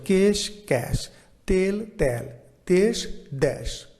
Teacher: বাঙালি উপভাষায় সংবৃত এ বিবৃত এ হয়